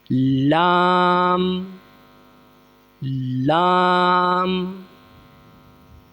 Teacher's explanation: لام زبان کا کنارہ اور دانتوں کی جڑ کے اوپر تالو کی جانب والے حصے سے